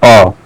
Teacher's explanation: अ वर्ण का उच्चारण स्थान क्या है? कंठ है।